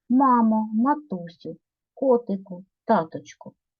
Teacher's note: вимовляється з окличної інтонацією високим тоном